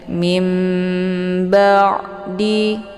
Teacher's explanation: bertemu dengan huruf ba ini dinamakan dengan iqlab ya cara bacanya nunnya dibalikkan ke dalam bunyi mim ya dengan cara dibaca dengung